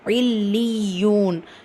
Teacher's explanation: மேல அலிஃப் மத்தா 2 ஹரக்கத்தளவு நீட்டம் கொடுக்கணும்.